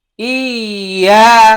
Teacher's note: জবরের বাম পাশে খালি আলিফ, এক আলিফ লম্বা করতে হবে, এটা মাদ।